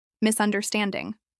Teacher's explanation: This is pronounced with 4 syllables and stress on stand.